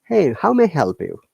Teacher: One is rising notations or rising intonations, like voice is always going high, like in this in question, like, hey, how may I help you?